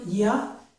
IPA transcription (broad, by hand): j